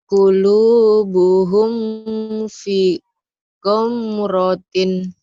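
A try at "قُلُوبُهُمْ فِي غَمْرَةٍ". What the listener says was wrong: Iya, hum-nya ifa sapawi. Idhar sapawi, jangan ditahan. Qulubuhum fi ghamratin. Ya, jangan ditahan. Fi-nya panjang. Fi ghamratin. Qulubuhum fi ghamratin.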